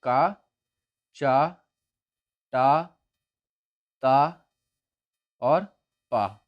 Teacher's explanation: का वर्ग का उच्चारण स्थान कंठ, चा वर्ग का उच्चारण स्थान तालु, टा वर्ग का मूर्धन्य, ता वर्ग का दंत और पा वर्ग का उच्चारण स्थान ओष्ठ